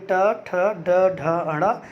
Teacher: ऐसी अवस्था में बोलते समय हमारी जीभ आधा मुड़ जाती है और पीछे की तरफ जाती है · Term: मूर्धा